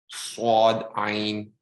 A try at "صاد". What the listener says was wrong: Make more of an S sound. It starts off with just the same as seen, but then it becomes heavy. Swad.